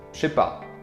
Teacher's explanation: But in spoken French, the je sound most of the time doesn't sound like je, but like sh, because it's a really short j sound. So it sounds like sh. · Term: Pronoun contraction